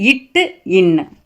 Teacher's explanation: நாவின் நுனி அன்னத்தின் நுனி பொருந்துவதால் பிறக்கும் எழுத்துக்கள்